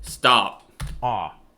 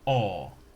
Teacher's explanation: the American O sound is an unrounded vowel, Stop. ah, while the British O sound is rounded, aw.